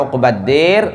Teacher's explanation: Kalau imalah uqbad dir, maka dia tipis.